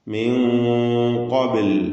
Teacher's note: സാക്കിനത്ത നൂനിനെ ഇഹ്ഫാ ചെയ്ത് മറിച്ചു മണിച്ചു ഉച്ചരിക്കുമ്പോൾ ആ മണിക്കലിലും തഫ്ഹീം വേണം